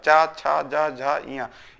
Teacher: इस चा वाले वर्ग को स्पर्श संघर्षी भी बोला जाता है। क्यों, क्योंकि इसमें भी संघर्ष होता है। जब बोलते हैं तो इसमें संघर्ष होता है, जिह्वा में संघर्ष होता है, चा, छा, जा, झा, इया।